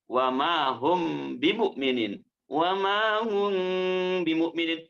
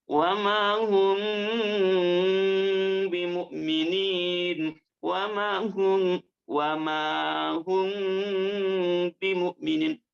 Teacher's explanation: Ketika menemukan mim sukun menghadapi huruf ba, panjangkan 2 harakat dan dengungkan. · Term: ikhfa syafawi